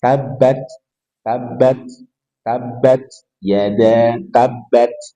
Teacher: Tabbat enggak boleh karena ta tidak punya sifat desis tetapi hams